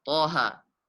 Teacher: Di sini keduanya dibaca 2 harokat karena termasuk pada huruf ha ya tahara. Taha, huruf ta dan huruf ha dibaca 2 harokat. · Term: mad tabi'i harfi